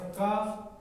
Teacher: विवार श्वास अघोष अल्प प्राण, ये अल्प प्राण हो गया